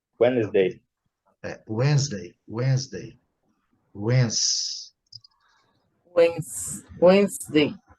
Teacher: o D é mudo, né? O D é mudo. Whens. O E é mudo.